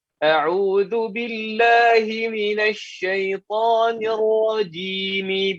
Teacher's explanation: Raji tadi, rajinya dua harakat ya.